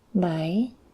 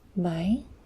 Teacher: Bảy has the question tone, so you pronounce it kind of as if you're saying really.